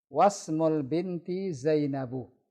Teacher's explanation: Was langsung, wa langsung ke huruf sin. Alifnya ada, hamzah wasalnya ada, tapi tidak dibaca.